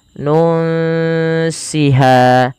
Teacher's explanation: Ini sama kita baca dengan bacaan ikhfa, yaitu disamarkan bunyi nunnya kepada huruf sin.